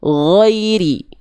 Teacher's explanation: Tinggal di huruf Di huruf di kalimat ghairi sampai waladdallin ini yang Bunda perlu sempurnakan adalah pelafalan huruf ghain. Huruf ghain dilafalkan dari tenggorokan paling atas atau tenggorokan paling luar atau ujung tenggorokan. Sifat suaranya hurufnya itu dia lemah.